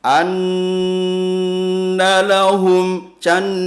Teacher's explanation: ada nun berharokat tasdid. Cara bacanya tahan dengan dengungan. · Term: bacaan hunnah